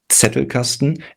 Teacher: It's Zettelkasten, and the clue is to, if the target audience is English or American speaking, the clue is to treat this as if there was a T leading the word. So you have a tongue T sound at the beginning, which usually with a leading Z, which is in German called Z and not Z.